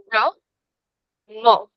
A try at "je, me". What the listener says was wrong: Je, me. You see, we don't say a at the end. We say je, me.